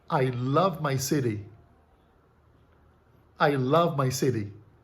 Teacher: É como se esse T em city fosse um D de dado, mas produzido com esse toque rápido nos alvéolos. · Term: flap